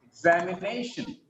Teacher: Name gets primary stress. Exam gets secondary stress. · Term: primary stress and secondary stress